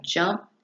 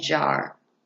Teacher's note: The j sound is a voiced aphricate sound. The sound for the sound for j is j, as in the beginning of jump and jar.